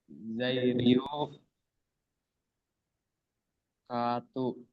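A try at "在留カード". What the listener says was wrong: Bukan. Ada teng-tengnya nih. Bukan to. Ryu-nya agak panjang ya.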